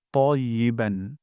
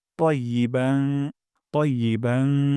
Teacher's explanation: ত মোটা করে পড়বো যেন তাইয়েবান না হয়ে যায়